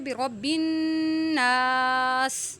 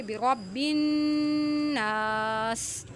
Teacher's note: سین میں سیٹی کی آواز نکالیں گے